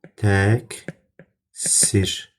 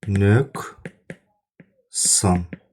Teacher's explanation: Q-dan sonra kar samit gəldikdə Kimi tələffüz olunacaq. K səsini verəcək.